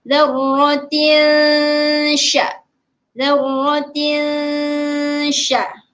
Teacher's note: Terus masuk kepada sya tu sebab kita perlu memasukkan ataupun kita perlu sembunyikan sedikit bunyi tanwin tu. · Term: ikhfa hakiki